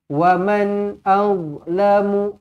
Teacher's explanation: nun mati izhar halqi, dibaca dengan jelas, dibaca dengan terang.